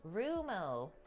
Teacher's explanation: The stress is typically on the first syllable.